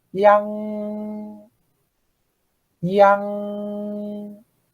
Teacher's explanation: pull our tongue back, so we don't have our tongue tip at the back of our upper teeth